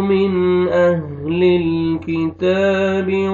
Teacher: نون ساکن کے بعد حروف حلقی میں سے حمزہ ہے، یہاں پہ اظہار کریں گے